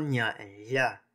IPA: ɲ and ʎ